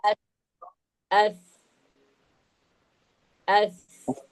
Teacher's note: തട്ടുന്നത് സ പറയുമ്പോൾ നമ്മുടെ നാവിന്റെ അറ്റം മേൽ മുൻപല്ലിന്റെ അരികിൽ അതെ അപ്പോ സായിന്റെ ഉൾഭവസ്ഥാനം നമ്മൾഇപ്പോ മനസ്സിലാക്കിയില്ലേ നാവിന്റെ അറ്റം എവിടെ തട്ടണം മേൽ മുൻപല്ലിന്റെ അറ്റത്ത് തട്ടണം